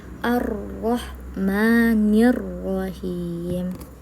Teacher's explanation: Yaitu sering terjadi getaran lidah yang terlalu banyak pada huruf ro. Seterus seharusnya getaran hanya cukup dua kali